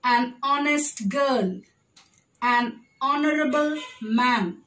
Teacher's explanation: the h is silent in honest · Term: silent h